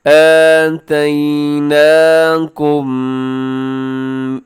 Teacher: اب اس کے آخر میں میم ہے اور میم ساکن کے بعد جب با آتا ہے تو آپ کو پتہ ہے کہ میم ساکن کی آواز کو ناک میں لے جاتے ہیں، اسے کہا جاتا ہے اخفاء شفوی۔